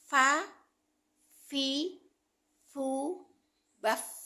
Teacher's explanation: Karena sifat yang pertama yang dimiliki oleh huruf fa adalah hames. Hames adalah ee angin yang dikeluarkan saat huruf di keluarkan.